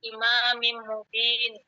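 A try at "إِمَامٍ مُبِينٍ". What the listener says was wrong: Imamin Mubinin ya, dua-duanya tanwin.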